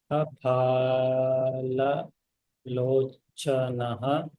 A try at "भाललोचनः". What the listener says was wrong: Bha, not fa. भाललोचन भाल.